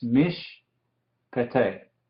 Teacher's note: como hay dos Shewas consecutivos, el primero es silencioso y este segundo se dice